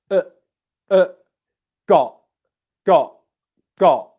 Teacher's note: And what you're essentially doing is a glottal stop where in your throat down here, the windpipe in your throat is coming together and stopping airflow like this.